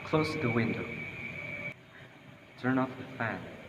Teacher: Imperatives use falling intonation.